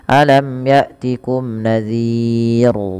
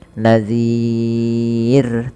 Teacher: lafal ro terakhir ini rnya dibaca dengan tipis. Kita kenal dengan istilah ro tarq. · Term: ro tarqiq